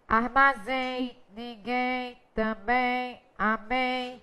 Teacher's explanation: Então, mais uma vez, nós estamos diante de um ditongo nasal.